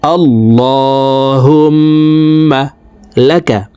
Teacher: হুম এখানে ওয়াজিব গুন্নাহ, 3 সেকেন্ড পরিমাণ গুন্নাহ করে পড়ব।